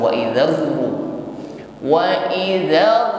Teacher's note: Wa idzar ketika menekan pertama kali itu belum mencucu. Baru ketika mengucapkan ru, bibir baru mencucu.